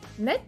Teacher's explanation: cuando digo net, la forma masculina suena la T. Eso es muy raro, no es usual.